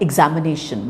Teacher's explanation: The second syllable, which is am, and the fourth syllable are more prominent than the other syllables. And between them, the fourth syllable is more prominent than the second syllable.